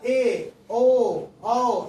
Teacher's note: मुख द्वार आधा बंद रहता है ए ओ में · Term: अर्ध विवृत